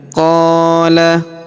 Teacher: huruf qo kita panjangkan dua harakat karena terdapat alif di depannya